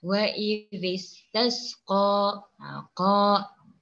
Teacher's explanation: Alif kecil di sana menandakan hukumnya adalah hukum mad tabi'i ataupun mad asli. Okey, jadi bacaan pada kalimah ataupun bunyi huruf qa hendaklah dipanjangkan. Kadar harkatnya sebanyak 2 harkat.